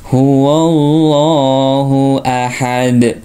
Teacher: Dalnya dipantulkan atau disukunkan menjadi qalqalah kubro ya